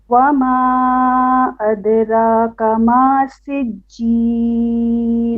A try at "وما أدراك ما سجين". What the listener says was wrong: Make your ra more heavy. أدراك. را heavy. Okay, full mouth.